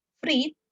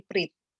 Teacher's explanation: Kata Fried di akhir kata dilafalkan dengan bunyi plosif alveolar bersuara de, berubah menjadi prit dengan plosif alveolar tak bersuara te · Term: final obstruent devoicing